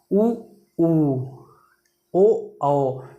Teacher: होठ ये क्या हो जाता है गोल हो जाता है